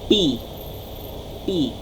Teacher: Sa pasara, walang tunog. Ang letter P, pasara, P, P. · Okay, so sa labi siya nanggagaling.